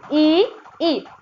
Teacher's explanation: देखिए आप जब ई तो इसका जो उच्चारण स्थान होता है गाइस कहाँ से होता है, तालु से। जब आप ई बोलते हो गाइस तो आपकी जीवा नीचे की ओर जाती है, इसकी मतलब वो कहाँ से हो रहा है, तालु से हो रहा है।